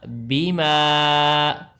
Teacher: بازر بی، میم الف زبر ما، الف سے پہلے زبر ہو اسے تو کہتے ہیں الف مدہ. الف مدہ ہوتا ہے ایک الف کے برابر لمبا، لیکن اوپر مد ہے تو اب زیادہ لمبا ہوگا